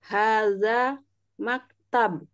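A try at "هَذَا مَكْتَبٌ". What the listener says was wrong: Dibaca semua harokatnya ya. Dibaca semua harokatnya. Nah, kalau hada maktab itu nggak dibaca semuanya.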